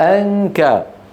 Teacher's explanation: لا رجوع للسان المزمار عند الكاف · فصوت الغنة مرقق والجزء الفموي مقفول بأقصى اللسان